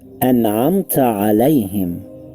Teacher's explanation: known as letters of idhar, then you pronounce the noon or tanween clearly without ghunna or ikhfa